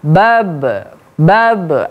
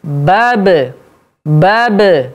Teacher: tekanan atau kekuatan suaranya itu sama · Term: Qalqalah